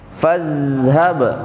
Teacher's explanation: fa-nya nggak dipanjangin, langsung masuk ke huruf zal